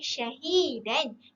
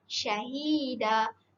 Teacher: Syahida di situ jika waqaf ia jadi mad iwad. Jadi kita tak baca syahidan, kita baca syahida. Jadi ianya 2 harakat.